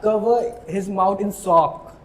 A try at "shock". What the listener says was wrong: Sock nahi, shock.